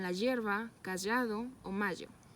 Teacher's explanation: Lengua palatal sonoro. La lengua se adhiere a la parte media y anterior del paladar duro, dejando por el centro un pequeño canal donde discurre el aire y las cuerdas vibran. Se realiza cuando no precede por pausa nasal o lateral, y los ejemplos son la hierba, callado o mayo.